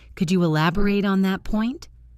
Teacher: As an adjective, it's elaborate with a short final syllable. As a verb, the ending is slightly longer.